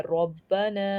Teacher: را ہمارا جو ہے وہ تفخیم ہے یعنی پر کر کے موٹی آواز میں پڑھنا ہے